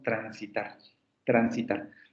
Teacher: En transitar, por ejemplo, esa R también es simple. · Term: vibrante simple